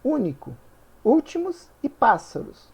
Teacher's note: as três palavras com a antepenúltima sílaba tônica